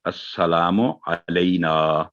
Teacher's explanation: नून पर फतह यानी ज़बर के साथ अलिफ है, तो 2 सेकंड इसकी आवाज़ होगी